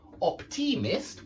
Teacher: we don't put the stress on the Mist we put the stress on the o